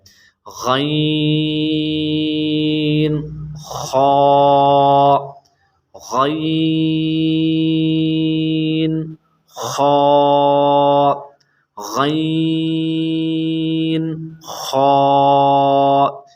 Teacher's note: غین خا حلق کے اوپر والے حصے سے ادا ہوتے ہیں